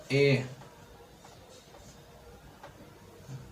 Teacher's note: ठीक, इसको आप तोड़ के, तो इसका उच्चारण स्थान क्या हो जाएगा कंठ और तालव्य, ए का उच्चारण स्थान हो जाएगा कंठ और तालव्य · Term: संयुक्त स्वर